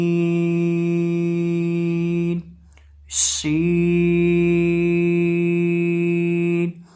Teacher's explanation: जुबान का वस्त जब ऊपर मद्दे मुकाबिल तालु से लगता है तो शीन अदा होता है।